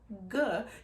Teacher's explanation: but if you do like something like the G sound G you can feel your tongue going towards the back of your throat and it's blocking your throat